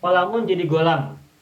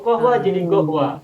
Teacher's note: Kata Ibnu Battuta, saya menemukan suatu kaum yang membaca huruf qaf dengan ghain. Qalamun jadi golam.